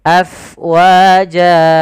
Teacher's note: Kemudian pada lafal fa, alirkan nafasnya, karena fa itu harus ada angin yang kita keluarkan karena dia sifatnya hams, mengalirnya nafas. Afwaja. Lafal jan mad iwad kembali, yaitu kita ganti fathatain yang menjadi panjang.